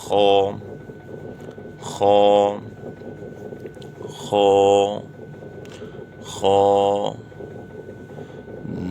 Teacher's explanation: حلق کے شروع سے جو منہ کی طرف ہے، جو حلق کا ابتدائی حصہ ہے یعنی منہ کی جانب بڑھ کر، تو وہاں سے یہ حرف پڑھا جائے گا، جیسے خو خو خو خو، دال دال دال۔